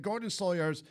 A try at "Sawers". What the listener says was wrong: And it's Sawyers. I've no Y in my surname. It's S-A-W-E-R-S, spelt Sawls.